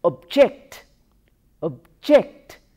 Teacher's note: the first syllable as object object stresses on the first syllable suppose we pronounce it as a verb the stress shifts to the second syllable then we say object object stress is on the second syllable